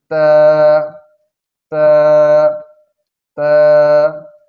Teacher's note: তা হরফের মাখরাজ হচ্ছে জিহ্বার আগা সামনের উপরের দুই দাঁতের ঘোড়ার সঙ্গে লাগাইয়া উচ্চারিত হয়